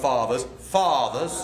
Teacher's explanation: Slash the R of fathers.